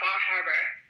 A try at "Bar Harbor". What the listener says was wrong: No R in Bar Harbor. Overpronouncing it, it's very subtle. Bar. It's like Boston when they say car. If you weren't from that portion of the country, you would say Bar Harbor, and you would pronounce the R.